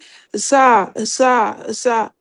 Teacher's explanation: زا زبان کو نیچے، جو آپ کی زبان کی نوک ہے نیچے کے 2 دانتوں کی جڑوں میں لگیں گے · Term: سیٹی کے ساتھ